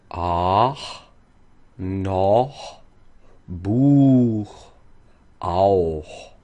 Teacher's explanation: The Ach-laut is not as harsh as we all think it is, so very often we think of Ach, and it's a very back sound. But for singing purposes, we can keep it very forward, almost like a light H. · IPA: [χ]